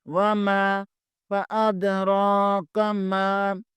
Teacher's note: میم زبر کے بعد الف مدہ ہے، اسے بھی ایک الف کے برابر کھینچیں گے